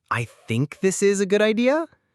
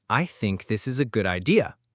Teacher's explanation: That sounds unsure. Smart speakers use falling tone.